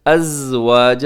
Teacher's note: ازواج زا میں سیٹی ہوتی ہے، اس کا خیال رکھیے گا۔ واو کے بعد الف ہے، یعنی الف سے پہلے زبر ہے تو الف مدہ ہے۔